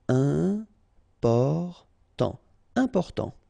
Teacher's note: you've got this EM, and after that it's a consonant, so it is here nasal.